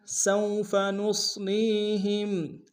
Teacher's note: واو لین بغیر کھینچ پڑیں گے